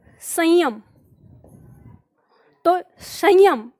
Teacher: इसका उच्चारण जो है वो केवल नाक से होता है कंठ से निकालकर केवल नाक में जाता है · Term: अनुस्वार